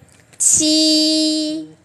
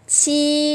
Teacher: Bật hơi ra đó. Chi, đọc bằng đầu lưỡi và bật hơi ra